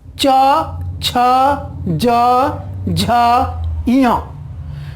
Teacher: जब हम इनका उच्चारण करते हैं तो इनके उच्चारण के लिए तालु में स्पर्श होता है।